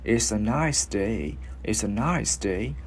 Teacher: mình kéo cái hơi cho nó dài ra thì nó sẽ luyến vào chữ ơ